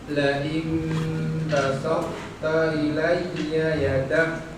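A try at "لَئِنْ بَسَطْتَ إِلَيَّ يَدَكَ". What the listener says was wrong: Masih basa tipis. Toknya tebalkan, Pak.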